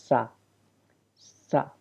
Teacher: سیٹی کی مانند آواز آتی ہے اس میں سے